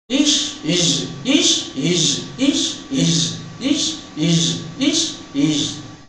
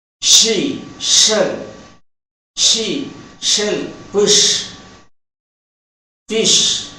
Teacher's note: When ish is produced, the vocal cords do not vibrate